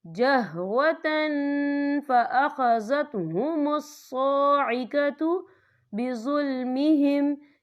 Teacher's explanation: یا دیکھیں جہوتن، تا کے پر تنوین ہے، تنوین کے بعد جو ہے فا آ رہا ہے، اور فا جو ہے اکفا کا ورڈ ہے، تو ہم یہاں اکفا کریں گے، تنوین کی آواز کو ناک میں چھپائیں گے.